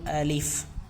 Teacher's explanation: جب ہم ہونٹوں کو گول کرتے ہیں تو ظاہر سی بات ہے کہ واو پیدا ہوتی ہے، تو ہمیں ہونٹ گول نہیں کرنا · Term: باریک